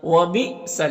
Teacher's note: یہاں پر یہ حمزہ ساکنہ ہے تو حمزہ ساکنہ کا پڑھنے میں جھٹکا لگتا ہے